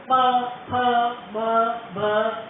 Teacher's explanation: ઓષ્યા, પ, ફ, બ, ભ, મ આ બધા સ્પર્શ હોઠને સ્પર્શીને બધા પ્રગટ થાય